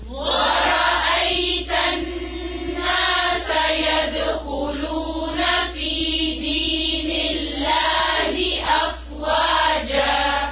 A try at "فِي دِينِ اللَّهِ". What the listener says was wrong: دینے نہیں ہے، دینی.